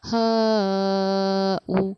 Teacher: حمزہ کی پیش کی حرکت کو ہم پڑھیں گے، اس لیے ہم اس کو حروف مدہ کی طرح نہ کھینچ کر پیش کی حرکت کی طرح پڑھیں گے کہ اس کو جلدی پڑھیں تھوڑا بھی نہ کھینچیں ، اس لیے ہم نے اس کو پڑھا ہا او۔ ایک